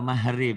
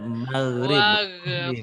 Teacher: kalau G-nya Arab, G-nya agak pecah